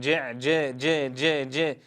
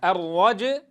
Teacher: نتنبه أيها الأحبة ألا نجعل الجيم مكسورة